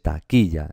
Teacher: Esta sería la sílaba tónica. Por lo tanto, la intensidad está aquí, en qui